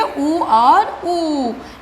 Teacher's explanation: उ और ऊ इसका उच्चारण स्थान भी ओठ अर्थात ओष्ठ है।